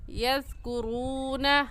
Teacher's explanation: وما یذکرون میں زال نرم حروف میں سے ہے، نرمی سے پڑھیں گے، اور یذکرون واو ساکن سے پہلے پیش آ گیا تو یہ واو مدہ ہوگا، اور واو مدہ کو 1 الف کے برابر کھینچ کر پڑھتے ہیں